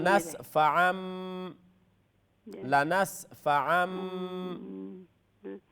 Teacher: تنوین کی آواز کو جی میم سے بدل ڈالیں گے. میم سے بدل ڈالیں گے. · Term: اقلاب